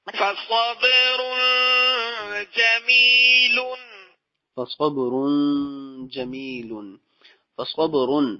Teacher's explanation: تنوین کے بعد جیم آ گیا جو کہ حروف اخفا میں سے، تو لہذا یہاں پہ غنہ کیا جائے گا